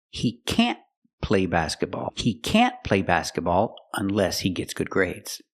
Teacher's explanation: Stress the word can't to express that it's negative.